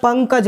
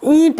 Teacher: तो पंकज में कंपन कम हो रहा है नाक से आवाज़ कम ए रही है लेकिन ईंट में बोल रहे हैं तो ईंट में नाक में कंपन अधिक हो रहा है